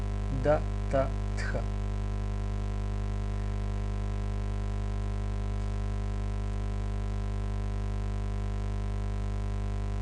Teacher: Д, Т и Тх ги викаме дентали, бидејќи се изговараат со помош на зъбите. Пречката се прави, пречката што јазикот ја прави усната празнина, ја прави на зъбите.